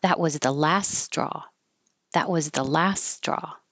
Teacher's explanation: hold the T so you won't hear that. Just go to the T position. That was the same vowel, last straw.